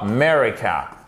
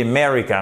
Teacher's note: Un peu comme dans America. On n'entend presque plus le A.